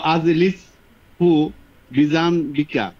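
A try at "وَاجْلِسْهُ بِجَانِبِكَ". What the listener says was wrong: ওয়া আজলিস না বলে ওয়াজলিস বল, হামজার উচ্চারণটা জানিবিকা, বিজানবিকা বললে তো সর্বনাশ। নিবিকা,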